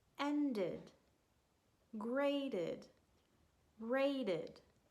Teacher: The ed sounds like id, and it's very short and unstressed.